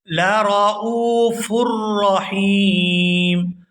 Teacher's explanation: یہاں حمزہ کو واو ساکن کے ساتھ ملائیں گے تو کھینچ کر ادا کریں گے کیونکہ یہاں پر واو ساکن ہے اور اس سے پہلے پیش ہے تو یہ واو مدہ ہے.